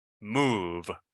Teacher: My lips are going to be together, and it's going to be nasal. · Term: bilabial